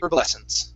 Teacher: Okay, now I believe in Canada they might actually pronounce the H saying herbal, and in the UK, but in the United States the H in herbs is silent